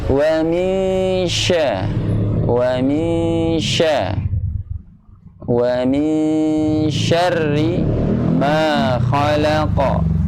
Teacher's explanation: Wa min syah, tadi bacanya ada terdengarnya min, tapi wa min syah. Ya, jadi ketika masuk nunnya syah itu sudah menyiapkan posisi makhraj syah. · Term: bacaan ausad